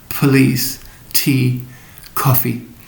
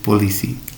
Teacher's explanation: pt and k are aspirated in english so police tea coffee and not dry indonesian as in policy